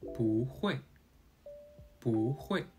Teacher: When the character that follows 不 is in the 1st, 2nd, or 3rd tone, 不 remains its 4th tone. However, when the character that follows 不 is in the 4th tone, 不 changes to a 2nd tone, pronounced as 不.